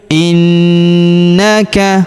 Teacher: huruf na kita tahan dan kita tekan, serta kita dengungkan 2-3 harokat karena terdapat tanda tasydid di atasnya